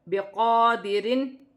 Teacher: را موٹی پڑھی جائے گی، را ساکن سے پہلے زبر ہے تو را موٹی پڑھی جائے گی. قاف پر کھڑی زبر ہے، 1 الف کی مقدار کھینچ کر پڑھا جائے گا